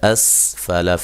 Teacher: سین کو ہلانا نہیں ہے، لام اور فا کو لمبا نہیں کرنا